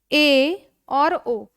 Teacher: मुख विवर आधा बंद रहता है। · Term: अर्ध संवृत्त